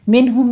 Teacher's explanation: منہم میں نون ساکن کا قاعدہ اظہار حلقی، اور ہم میں میم ساکن کا اظہار شفی کریں گے۔